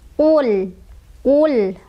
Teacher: Lam sukun itu tidak boleh memantul. Qul, qul, tidak boleh qul, tidak boleh qul, ditahan jangan ya.